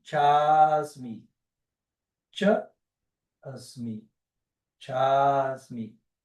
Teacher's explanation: Ah, não, tem uma outra regra aqui, muito fácil também, eu estava pulando ela, que é o encontro de dois As. Quando dois As se encontram, eles se aglutinam e vira um só A.